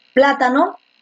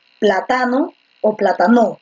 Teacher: Entonces la fuerza de voz está en pla.